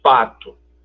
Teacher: Se você for dizer pato, repare que você fecha os dois lábios, eles são bilabiais.